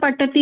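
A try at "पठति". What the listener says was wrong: అది పఠ, అది ఒత్తు ఠ, పఠతి. ఇది మామూలు తాతాలో రెండో తా ఉంది చూడండి, పాతాతి. అది పాఠాతి.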